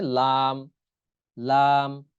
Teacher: জিহ্বার আগার কিনারা সামনের উপরের দাঁতের মাড়ির সঙ্গে লাগাইয়া। জিহ্বার আগার কিনারা, জিহ্বার আগার কিনারা আছে না, ওই কিনারা থেকে তার উপরে যে মাড়ির দাঁত, মাড়ির সঙ্গে লাগাইয়া উচ্চারণ হবে লাম, লাম, এরকম উচ্চারণ হবে।